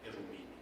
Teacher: So R has been sort of switched up with the L sound.